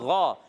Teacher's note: غین کا مخرج ہے حلق کا اوپر والا حصہ